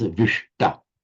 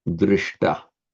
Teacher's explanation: whenever you get the palatal sh sound followed by a t, it automatically becomes retroflexive.